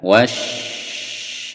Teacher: Ini ada penekanan pada shin. Wash, ada tasdid, itu ditekan lalu ditahan.